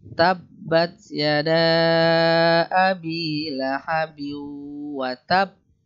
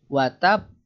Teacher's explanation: kalau untuk yang di watab itu karena ada tasdid di sana, maka agak ditahan dulu.